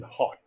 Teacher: it is produced at the glottis that is her as in hot there is the airstream comes